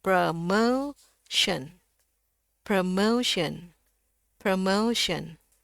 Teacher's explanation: Kalau di Amerika itu ou. Kalau di sini E dengan U. Jadi E e bukaan mulutnya juga lebih kecil.